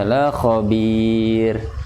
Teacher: Jangan tebal, tarkik. La khabir dibaca tipis.